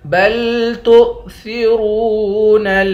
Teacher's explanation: بل تؤثرون تا کو ہمزے سے ملائیں گے، واو سے نہیں ملائیں گے